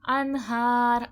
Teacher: ان میں اظہار حلقی ہو رہا ہے، اخفا نہیں ہو رہا ہے کیونکہ نون ساکن کے بعد حرف حلقی کا ہا آ گیا ہے